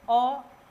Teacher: अर्ध विपृत स्वर होता है जिनके उच्चारण में मुंह जो है विपृत स्वरों से थोड़ा सा कम खुलता है